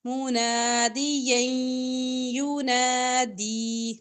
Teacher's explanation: یا کی دو زبر کو یا کے ساتھ ملا کر ادغام کریں گے یو منادیا ینادی نون زبر الف نا ینادی لمبا کریں گے